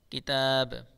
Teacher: با کے اوپر جزم آ جائے گی تو یہاں با میں قلقلہ کریں گے